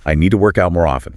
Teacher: when it functions as a verb phrase to work out, the stress evens out a bit or shifts slightly to the out